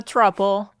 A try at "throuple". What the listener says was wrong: Thruple. You said truple. Say thruple. Say thruple. Thruple.